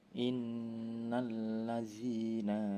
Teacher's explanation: ada hukum gunah karena terdapat nun bertasydid dibaca dengung 2-3 harokat